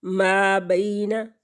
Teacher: یا ساکن سے پہلے لفظ کے اوپر زبر ہے تو یہ یا لین ہے، اور یا لین کو ایک حرکت کے برابر کھینچتے ہیں۔